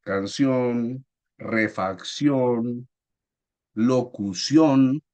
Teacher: su sílaba tónica está en la última sílaba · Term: palabra aguda